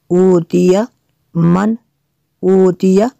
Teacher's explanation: نون ساکن کے بعد حمزہ ہے حروف حلقیہ میں سے، تو یہاں پہ غنہ نہیں کر سکتے۔ اوتیا من اوتیا اظہار ہوگا۔